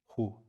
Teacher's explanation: the final sound, this is a breathy sound, the final H of Allah, is the beginning of the sacred syllable Hu.